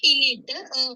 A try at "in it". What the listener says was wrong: It देखो आप देखो in it ट जोर दे के नहीं बोलना बिल्कुल.